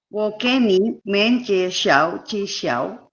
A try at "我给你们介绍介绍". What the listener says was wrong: Okay, very good, except 我给, yet again, there are 3 third tones. So you go up, you just go up, otherwise you can't fit everything in, okay? So 我给你们介绍介绍.